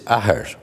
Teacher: The P is lost in the Celtic languages, so that the word for father in Irish, for example, is ahar, with no P and no F.